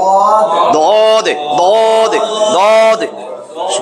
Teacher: জিহ্বার গোড়ার কিনারা উপরের দাঁতের মাড়ির গোড়ার সাথে লাগে পড়বেন। এক পাশ হইলেও হবে, এক পাশ লাগলেও চলবে। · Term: 7 নম্বর মাখরাজ